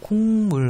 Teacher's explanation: 기역이 미음을 만나면서 이응이 됐죠. 그러면 기역이 미음을 닮아갔겠죠. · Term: 비음